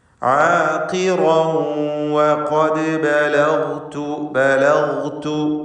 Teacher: ബലഗ്തു ഗൈനിന് തഫ്ഖീം കൊടുക്കുക. മറ്റക്ഷരങ്ങൾക്ക് തർക്കീഖാണ്.